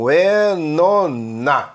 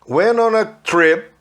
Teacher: Reparem que o T do went, que eles não gostam de falar, né? Saiu já juntando o N do went com on. Went on a. Emendou tudo.